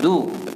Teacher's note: Alhamdulillah. Maknanya kalau sebut dal ni, tuan-tuan kena pastikan hujung lidah berada dekat hujung gigi.